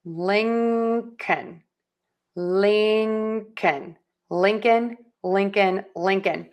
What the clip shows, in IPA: ˈlɪŋkən